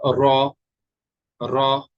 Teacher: رو میں جو ہے نا، یہ نوک جو ہے یہ ٹپ لگے گی تالو کے ساتھ، تالو یعنی پیلٹ کے ساتھ اوپر. تو ادا ہوگا رو.